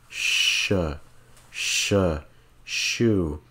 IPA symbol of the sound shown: ʃ